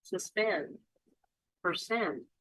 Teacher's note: two syllable words where the second syllable is stressed